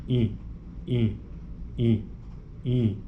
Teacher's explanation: a corrente de ar sobe e penetra na cavidade nasal no nariz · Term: vogal nasal